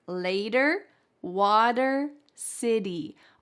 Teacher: All three of those words have that T in the middle changed to a D.